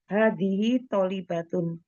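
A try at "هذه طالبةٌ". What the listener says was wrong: Panjang pendeknya.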